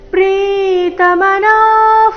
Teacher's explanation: ನಾ ದೀರ್ಘ ಹೇಳಿ ನಂತರ ವಿಸರ್ಗದ ಉಚ್ಚಾರಣೆ